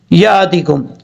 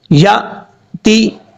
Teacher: حمزہ ساکن جو ہے وہ ہمیشہ جھٹکے کے ساتھ پڑھا جاتا ہے، جیسے یا تی، یا کے بعد حمزہ ہے، حمزہ ساکن ہے تو یہ حمزہ جھٹکے سے پڑھا جائے گا، یا تی، اس طریقے سے۔